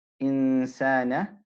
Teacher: we don't let the tongue touch the articulation point of the noon, but we put our tongue in a position close to, but not touching the makhraj of a sin, and we hold the sound with a ghunna, right?